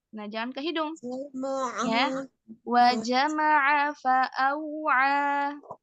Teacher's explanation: ada huruf ain ya. Hati-hati jangan sampai ke hidung.